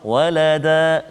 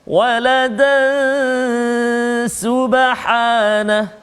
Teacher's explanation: tanwin bertemu dengan sin, iaitu ikhfa hakiki, dengung 2 harakat bacaan dia